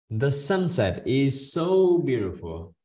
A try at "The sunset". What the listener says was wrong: Okay, TH, okay, TH, để mình để lưỡi chưa hay sao nào.